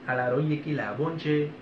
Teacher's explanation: I think that comes from the CH, alaroye kilaboche, the boche, the tongue goes to the top of the roof of the mouth, and there is a slight, ever so quick N, boche, and so I can understand how the boche can be mistranslated into bonche.